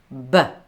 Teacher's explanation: it's bilabial. So the sound is made by placing both lips together to block the air completely.